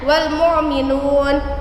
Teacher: Hukum tajwidnya alif lam qamariyah karena ada alif lam bertemu dengan huruf mim. Cara bacanya huruf al dibaca dengan jelas